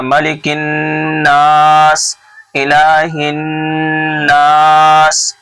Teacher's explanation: تو یہ ناس کو کھینچ کر کے پڑھنا ہے کیونکہ نون الف زبر نا ہے، الف سے پہلے زبر ہو تو الف مدہ ہوتا ہے.